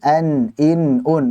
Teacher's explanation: Jadi membaca dengan izhar, membaca dengan jelas, itu berarti kita membaca sesuai dengan makhrajnya dan juga sifatnya secara sempurna. Kita tahu huruf nun, makhrajnya di ujung lidah, ketemu dengan gusi-gusi gigi atas. Kemudian sifat-sifatnya, misalkan ada jahar, ya, kemudian ada tawassut, kemudian ada istifal, kemudian ada infitah, kemudian ada ismat, dan juga gunnah.